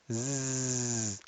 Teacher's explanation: za has the vocal chords working za has voice scene does not have voice it's just air passing through so